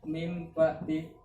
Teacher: nunnya ini suaranya hilang diganti dengan mim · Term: iklab